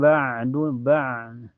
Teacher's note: Setelahnya ada ain sukun mutlak ya, kayak tercekik ba, dan makhraj ain itu keluar dari tenggorokan ya, tengah tenggorokan, yaitu wasatul halki, ini sejajar dengan ha.